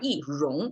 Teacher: 荣 is a rising tone, so therefore 一 is downward tone.